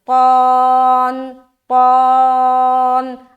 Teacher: قو کو موٹا کرتے ہوئے قون قون